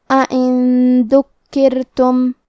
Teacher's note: آخری میں نون ساکن ہے، پھر حرف الدال آتا ہے کلمت ذکرتم. دال حروف الاخفاء میں سے ہے، تو ہم یہ حکم کو غنہ کے ساتھ ادا کریں گے